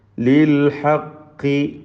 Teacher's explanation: ഖാഫിന് കസ്റാണ്, കുറഞ്ഞ തഫ്ഖീം കൊടുത്താൽ മതി.